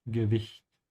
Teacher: make sure to open your mouth on the CH. It's not a K